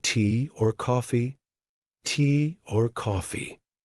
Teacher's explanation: this or would be connected to the word before and it will sound like so the are now sounds like